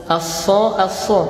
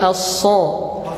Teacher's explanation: bukan bibirnya yang maju, tapi pangkal lidahnya yang diangkat supaya dia jadi tebal. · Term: huruf shad